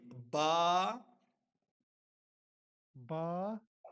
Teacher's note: با کا مخرج ہے دونوں ہونٹوں کی گیلی جگہ کا حصہ